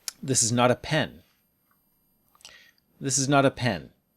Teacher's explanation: you can shift the stress to not to show a contrast